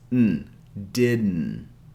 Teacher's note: the second D, because it's followed by an N sound, we pronounce it as a glottal sound, didn't. To make this sound, all you have to do is place the tip of your tongue behind your upper teeth and pronounce the N sound like this.